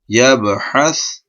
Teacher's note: سا کو ہم نے ایسے پڑھنا ہے نرم، مطلب سین کا ساؤنڈ نہیں آنا چاہیے اس میں